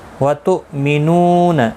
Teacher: حمزہ ساکن کو جھٹکے کے ساتھ ادا کیا جائے گا